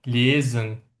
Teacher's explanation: Ona görə biz oxuyuruq lesen. Burada S-ni Z səsi kimi oxuyuruq.